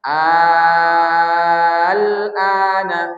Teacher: Jadi diibdalkan maka dibacalah alifnya yang panjang. Jangan lamnya dipanjangkan. Jangan tapi a-nya yang di panjangkan.